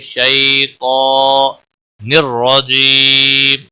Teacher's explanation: را زبر کی وجہ سے پور بھی پڑا جائے گا